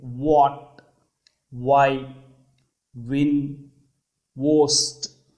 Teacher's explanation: W shaped వా సౌండ్ని వేలర్ అంటారు. Lips are rounded.